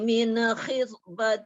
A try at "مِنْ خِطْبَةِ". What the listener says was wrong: Jaga min, jangan min khita. Min khita.